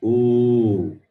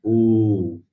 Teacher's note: Then the long vowel is ooh. Stretch it for 2 units of time.